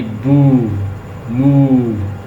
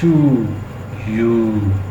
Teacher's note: ऊ, जैसे ये बू, मू, आप खुद फील करते हैं। टू, यू, आपको फील हो रहा है ना कि टंग की बैक साइड से आवाज़ आ रही है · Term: बैक वावल